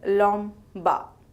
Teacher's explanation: this conjunct where nasal Mo combines with voiced Bo. The Mo changes slightly in shape to form Moi Boy.